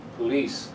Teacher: The second syllable is the strong one.